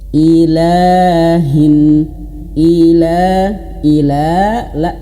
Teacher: La ya dua harakat itu satu ayun atau satu alif. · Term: panjang dua harakat